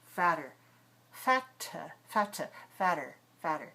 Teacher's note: So this is a light sound. This is like a tap sound.